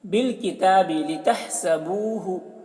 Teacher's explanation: بو کو کھینچیں گے، واو مدہ ہے، ایک الف کے برابر کھینچ کے پڑھیں گے